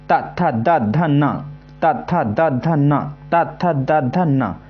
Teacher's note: हमारी जीभ जो है दांतों पर टच होगी। आप बोल के देखिए, जो हमारी जीभ है दांतों पर टच जरूर होगी। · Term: दांतों से